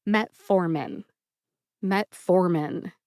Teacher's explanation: Emphasize the second syllable, for.